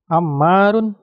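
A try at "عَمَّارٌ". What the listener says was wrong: Run ya, jangan ragu-ragu belakangnya supaya kedengaran. Run atau ru?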